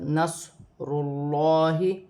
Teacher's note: اور حمزہ ساتھ میں جاء، صاد ساکن ہے، صاد کو نون کے ساتھ، نصر اللہ، را کو لام کے ساتھ پڑھا جائے گا۔ اللہ کی لام سے پہلے پیش آ رہی ہے تو یہ لام موٹی پڑھی جائے گی